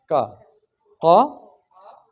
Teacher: ज़बान का पिछला हिस्सा तालू के साथ, तालू के पिछले हिस्से के साथ, करीबी हिस्से के साथ लग जाता है